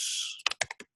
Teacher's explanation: I'm assuming those are both third tones.